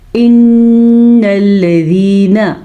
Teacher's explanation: نون کے اوپر غنہ کرنا ہے کیونکہ نون پہ شد ہے۔ جب بھی نون پہ شد آئے یا میم پہ شد آئے تو غنہ کرنا مسٹ ہے۔